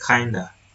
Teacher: the fricative v in of is reduced to a vowel-like sound e. In the consonant cluster is simplified.